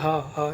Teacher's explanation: क्योंकि जो कंठ वर्ग है उसमें हा जो है कंठ से बोला जाता है। हा बोल के देखिए हा यहां से आवाज आ रही है तो कंठ की सहायता ली जाती है इसके उच्चारण में